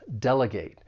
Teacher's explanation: This verb has three syllables. The stress is on that first syllable.